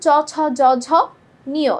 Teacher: চ, ছ, জ, ঝ, নিয়, এগুলো তালুতে উচ্চারিত হচ্ছে